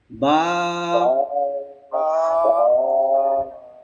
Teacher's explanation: আমরা যে দুই ঠোঁট স্বাভাবিক বন্ধ রাখি এই বন্ধ থেকে উচ্চারণ হয় অর্থাৎ দুই ঠোঁটের ভিজা জায়গা থেকে